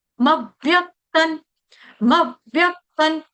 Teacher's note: आधे व को हमको डबल करना है दो बार उच्चारण करना है यहां पे श्लोक में नजर नहीं आएगा लेकिन उच्चारण करते वक्त आपको दो बार भी दोहराना होगा।